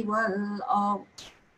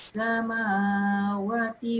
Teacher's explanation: Satu jenis yang atas dia mati, yang satu lagi atas dia tu ada sabdu. Okay, yang mati bunyi lam dia, yang sabdu tak bunyi lamnya